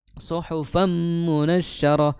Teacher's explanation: fathatain ya tanwin bertemu mim maka dihukumi sebagai idgham ya idgham kamil idgham bighunah